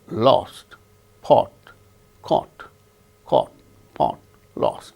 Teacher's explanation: there is no lip rounding when we utter Oh sound so that is a symbol of the sound Oh without lip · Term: Oh without lip rounding